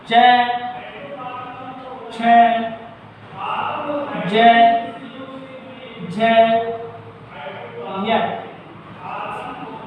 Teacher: ई बड़ी च वर्ग तथा य और श वर्णों का उच्चारण स्थान तालु होता है